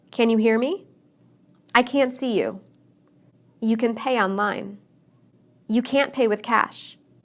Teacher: I didn't use the T sound in any of those sentences